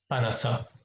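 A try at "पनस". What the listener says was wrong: Panasa. It is na. I'm not hearing a na properly. Panasa. Na is dental. Na. Panasa.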